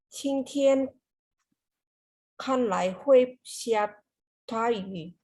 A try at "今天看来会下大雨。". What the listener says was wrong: 你的发音进步了很多啊。